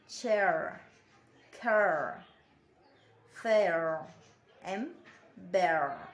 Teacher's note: Now, this vowel starts with the vowel found in get and beg before gliding to the central schwa position.